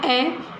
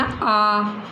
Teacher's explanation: दूसरा उच्चारण करना आ। तो ए की बजाय आ में ज़्यादा समय लगा है, मतलब ए से दुगुना समय लगा है। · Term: द्विमात्रिक